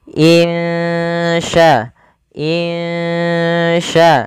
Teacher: huruf ikhfa maka kita hukumi dengan bacaan Ikhfa Hakiki cara membacanya samarkan suara nunnya kepada huruf Sya